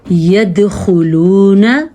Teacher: خا پر پڑھنی ہے اور دال پہ کلکلا کرنا ہے